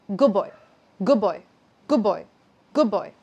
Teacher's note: here the D floats away and B joins the word, we get good boy.